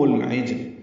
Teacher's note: اظہار قمری ہوگا عین کی وجہ سے، عین وسط حلق سے ادا ہوگا، جیم سے ملائیں گے، جیم ساکن پہ قلقلہ ہے۔